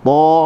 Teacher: huruf ta pula hujung lidah digusi. Ta, huruf yang tebal.